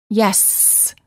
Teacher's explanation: The S sound is considered a continuant because the airflow can continue as long as we have air in our lungs · For example, when we say the s sound, spelled with the letter s, we can prolong it by saying yes. The s sound is considered a continuant because the airflow can continue